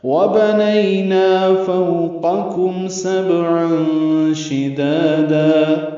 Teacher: بنینا نہیں یا لین، نا الف مدہ، نا کو دو حرکات لمبا کریں گے · کاف باریک ہے، میم ساکن پہ اظہار شفوی ہے. سبعان میں با ساکن ہے، اس پہ قلقلہ ہے، عین وسط حلق سے ادا کریں گے اور اس میں اخفا ہے.